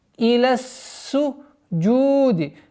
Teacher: Долгота в размере двух огласовок даммы над буквой джим.